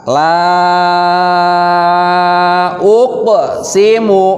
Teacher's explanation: Huruf la-nya itu harus dibaca panjang, lam alifnya. · Panjangnya 3 alif 6 harokat.